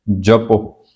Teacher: ਪੱਪੇ ਨੂੰ ਹੋੜਾ ਲੱਗ ਜਾਏਗਾ ਤੇ ਹਾਹੇ ਦੀ ਜਿਹੜੀ ਧੁਨੀ ਹੈ ਉਹ ਅੱਧੀ ਰਹਿ ਜਾਏਗੀ